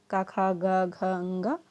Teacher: तो पहला है का वर्ग, का खा गा घ अंगा, ये हैं, इनका उच्चारण होता है कंठ से